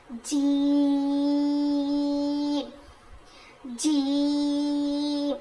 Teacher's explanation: देखिए यहां पर जीम या ज़ेर जीम है ऊपर से फिर उसके ऊपर थोड़ा मद बड़ा भी मद लिखा हुआ है ना तो हम इसको स्ट्रेच करेंगे खींचेंगे जीम जीम ये कहां से अदा होता है जीम अदा होता है जुबान के बीच वाले हिस्से से